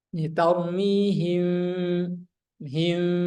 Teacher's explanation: Adapun huruf mim dan ba itu harus diringankan, ditutup ringan.